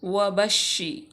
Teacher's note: वाव मफ्तू भी है, उसके बाद बा मफ्तू, उसके और बा को शीन में भी मिलाएंगे क्योंकि शीन मुशद्दद है। तो शीन हरूफ शजरिया में से है, बा भी हरूफ शफ़विया में से है।